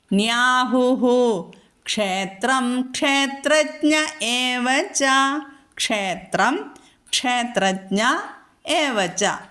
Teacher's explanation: വിസർഗം കഴിഞ്ഞിട്ട് ക്ഷ എന്നുള്ള അക്ഷരം വന്നതുകൊണ്ട് നമ്മൾ അവിടെ പൂർണമായിട്ടും വിസർഗം ഉച്ചരിക്കണം